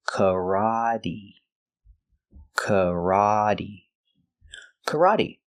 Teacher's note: This is the open ah sound, the short ah, like stop and hot, kara. The T is pronounced with a D, so we say karate, making the long E sound like green beans.